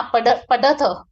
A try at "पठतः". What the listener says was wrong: पठतः क्या है, पढ़ नहीं है, ठ है। पठतः ये क्रियापद है।